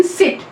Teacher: सिट में जो ई आती है वो वाला हमारा यहाँ पे है, तो ये हमारा यहाँ पे जैसे मैंने आपको बताया था just above half close position, अनराउंडेड और सेंट्रलाइज फ्रंट, तो it is front अनराउंडेड vowel just above half close position